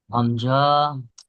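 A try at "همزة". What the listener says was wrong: হামজা, হামজা কোনো টান হয় না, জি। হামজা, এখানে হামজা বলে টান হবে না, হামজা।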